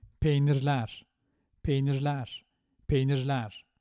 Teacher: That re at the end of peynir now, as it's in the middle with the suffix ler, it sounds more like re